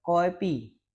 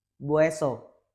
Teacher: loan word like coffee become koepi and bus become bueso. Following the Korean open syllable structure